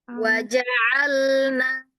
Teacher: Ain itu dapatnya ketika kita buka tenggorokan kita. Dilebarin. Di dalam itu rasanya.